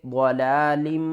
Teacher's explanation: اور میم مشدد ہے گنہ کریں گے